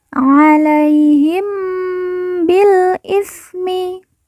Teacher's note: Mim sukun atau mim mati bertemu dengan huruf ba, kita baca dengung.